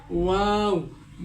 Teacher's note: ওয়াও উচ্চারণ করার সময় 2 ঠোঁটকে একটু গোল করতে হবে